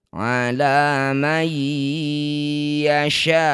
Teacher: Sya panjangkan enam harakat. Huruf terakhir sukunkan. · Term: mad arid lukun